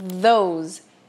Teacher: E tem o vooseado, que daí é a língua entre os dentes assoprando, porém com as cordas vocais vibrando